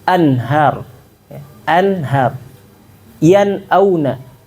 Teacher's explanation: Nun itu makhrajnya di mana sih? Nun itu ujung lidah ya, ujung lidah. Dia ketemu bagian langit-langit. Bagian langit-langit di depan.